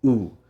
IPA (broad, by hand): u